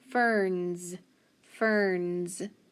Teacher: listen to that s ferns it makes that z sound